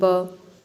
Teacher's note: जैसे ब बोलने पे आपका लिप टच हो रहा है